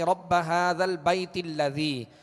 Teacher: لہذا اب درمیان میں یہ حمزہ گر جائے گا اور تا کو پھر لام سے ملائیں گے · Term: حمزہ وصلی